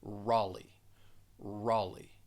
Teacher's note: It's really silent in this case. So you're going to pronounce that second syllable with the long E sound.